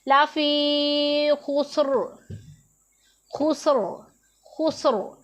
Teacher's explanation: را کو موٹا پڑھا، پر پڑھا۔